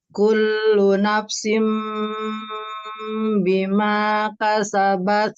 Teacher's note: merubah nun sukun menjadi Bunyi mim sukun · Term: iqlab